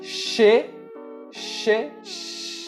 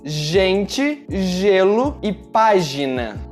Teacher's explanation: A única diferença é que no som do G você precisa vibrar as suas cordas vocais.